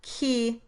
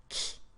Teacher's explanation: For the word key, the tongue constriction is a little further forward or fronted towards the hard palate.